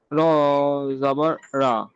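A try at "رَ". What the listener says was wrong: র র র রা হয়ে যাচ্ছে, জান না? র, র পুর করে বলো র।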